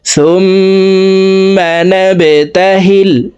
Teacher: বা কলকলার হরফ নিচের দিকে ধাবিত করে ধাক্কা দিয়ে উচ্চারণ করব